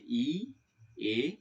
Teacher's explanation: সম্মুখ বা সামনের দিক মানে হচ্ছে এটা হচ্ছে বাগযন্ত্রের সামনের দিক এই বাগযন্ত্রের সামনের দিক থেকে উচ্চারিত হচ্ছে যে তিনটি ধ্বনি তারা হচ্ছে ই এ